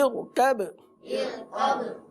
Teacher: حالانکہ را ساکن سے پہلے زیر ہے، لیکن چونکہ یہ حمزہ وصلی ہے، یہ حمزہ وصلی ہے، ما قبل ملانے کی صورت میں گر جاتا ہے. تو را ساکن سے پہلے حمزہ وصلی آ جائے، حرکت عارضی حرکت آ جائے، تو ایسی صورت میں را کو پر پڑھتے ہیں.